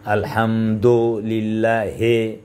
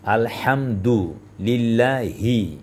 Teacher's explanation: জেরের উচ্চারণ বাংলায় একার হবে না। অনেকে বলে না যে আলহামদুলিল্লাহ হে, বলো না, এটা ভুল হবে, এভাবে হবে না।